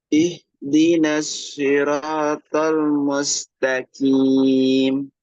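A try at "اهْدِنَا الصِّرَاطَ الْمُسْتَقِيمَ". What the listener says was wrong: Masih ada kim. Itu seperti huruf kaf bunyinya. Huruf qaf masukkan pangkal lidahnya itu ke dalam lagi, ya. Di belakang huruf kaf. Mustaqim.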